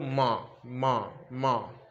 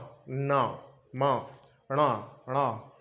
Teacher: तो हमारी ध्वनि जो निकल रही है वो ध्वनि हमारी कहाँ से निकल रही है? सबसे ज़्यादा नाक से निकल रही है। तो इसको हम पंचमाक्षर कह सकते हैं और अनुस्वार भी कह सकते हैं।